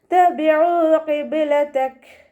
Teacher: ഇനി നമ്മളവിടെ വഖഫ് ചെയ്യുമ്പോൾ കാഫിന് സുക്കൂന് കൊടുക്കുമ്പോൾ ഹാഫ് സുക്കൂന് കൊടുക്കാൻ ശ്രദ്ധിക്കുക. കുറച്ച് എയർ പുറത്തോട്ട് പോകണം, സൗണ്ടും കൊടുക്കുക കേട്ടോ.